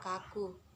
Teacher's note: Contoh kata selanjutnya itu K. Mati, oral, velar, dan plosif.